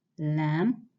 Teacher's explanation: you using the tip of the tongue and the sides behind the front teeth